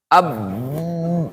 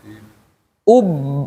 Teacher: Nggak keluar dia. Dia ngunci bibirnya.